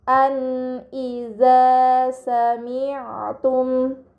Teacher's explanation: Dan terakhir pada kata an iza sami'tum terdapat nun sukun bertemu dengan huruf hamzah, ini dinamakan izhar halqi, maka nun sukun dibaca secara jelas